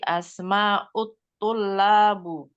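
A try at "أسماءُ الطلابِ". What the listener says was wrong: Asma'ut tullabi. Iya, kasrah ya, menjadi asma'ut tullabi.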